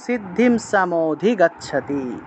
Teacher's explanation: সিদ্ধিম অনুসার থাকায় ম উচ্চারণ